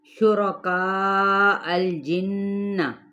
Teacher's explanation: را زبر کی وجہ سے پر پڑھا جائے گا